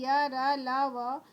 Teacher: जब आप इन वर्णों का उच्चारण करेंगे य, र, ल, व, तो उच्चारण के समय आपका जीभ तालु, दांत या होठों पे सटेगा, लेकिन पूरा स्पर्श नहीं करता है, हल्का सा स्पर्श करता है, इसलिए इसको अंतस्थ व्यंजन कहा गया है।